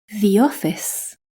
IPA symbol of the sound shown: ði